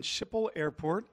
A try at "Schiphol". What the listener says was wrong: Almost right. Schiphol Airport. The difficult Dutch G.